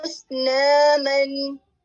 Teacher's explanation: تو یہاں پر آپ اسنامن، یہاں پر آپ اخفا نہیں کریں گے، نون کی آواز کو ظاہر کریں گے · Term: اظہار